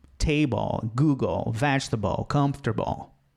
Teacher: Porque LE no fim da palavra tem som de O.